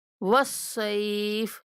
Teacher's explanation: صاد کے بعد لین ہونے کی وجہ سے نرمی کے ساتھ پڑھیں گے